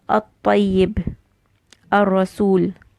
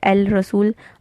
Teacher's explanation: you're going to merge the lam into the next letter, so the lam sound will not come. The 2 letters, they will merge into one. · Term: lam ash-shamsiyya